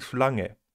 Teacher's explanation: In Verbindung mit <n> wird das <g> als velarer [ŋ]-Laut realisiert